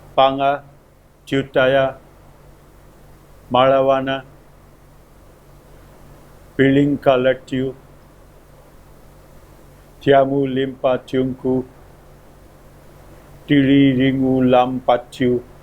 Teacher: the primary stress is placed on the leftmost syllable. The secondary stress is placed on the third syllable.